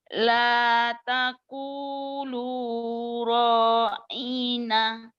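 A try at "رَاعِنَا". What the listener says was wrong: Ro-nya pendek. Ro. Yang I-nya. La yaqulu ra'ina. I-nya pendek. La taqulu ra'ina.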